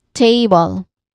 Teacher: So we stress the first syllable.